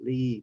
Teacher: the long sound there's a lot of muscles involved in your mouth so it's it's tense